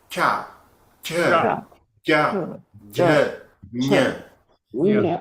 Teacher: So when it comes to chavagga, the middle of the tongue and the upper palate, we can see the air squeezing through that